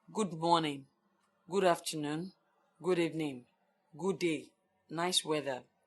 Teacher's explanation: Routine greeting. Not warm. Low rise tune.